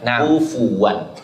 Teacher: Jadi fanya itu disukunkan akan tetapi harus didamahkan kufuan